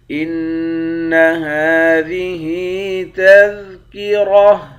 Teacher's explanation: نون مشدد پر غنہ کریں گے، ہا پر کھڑا زبر ہے، کھڑا زبر کو ایک الف کی مقدار کھینچتے ہیں، یہاں بھی ہا کے نیچے کھڑی زیر ہے، اس کو بھی ایک الف کی مقدار کھینچیں گے، را کو موٹا پڑیں گے، آخر میں گولتا ہے، گولتا پر جب وقف کرتے ہیں تو ہا بن جاتی ہے۔